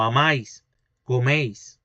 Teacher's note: Hay una síncopa del oclusivo alveolar sonoro.